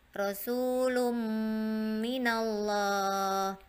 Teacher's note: Jadi masuk. Yang harusnya lun jadi dimasukkan ke mim. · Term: idgham bil ghunnah